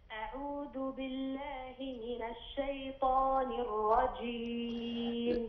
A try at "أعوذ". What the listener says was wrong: لا، الذال حرف لثوي، أعوذ ليس أعوذ، لابد تفرق بين الذال المعجمة والدال المهملة.